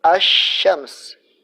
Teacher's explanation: ketika kita mengucapkan asy-syams, maka kita tidak mengizharkan lamnya atau dibaca dengan idgham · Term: alif lam asy-syamsiyah